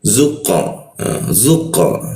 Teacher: Kalau huruf qo itu dipantulkannya ke arah O dia tapi mulutnya jangan monyong. Mulutnya A tapi keluarnya O.